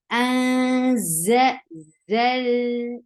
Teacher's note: za will give you a very buzzy sound, that is Z.